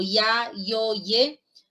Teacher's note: La I, cuando está en un diptongo como ya, yo, ye, se convierte en semiconsonante.